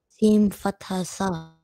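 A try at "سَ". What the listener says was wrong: Brilliant, next one.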